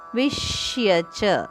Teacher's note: ವಿಷ್ಯಚ ಇಲ್ಲಿ ವಿ ಮೇಲೆ ಆಘಾತ ಇದೆ